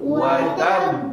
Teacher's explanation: jangan sampai watab menggelembung watabb Nah itu berlebihan ya